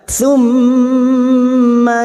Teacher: mim yang bertasdid gunah musyaddadah kita dengungkan selama tiga harakat